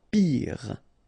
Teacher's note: Final E not pronounced, so R at the end.